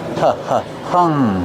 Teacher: Use a short uh sound like cuff and up. H- hung. And then the nasal sound for the ng.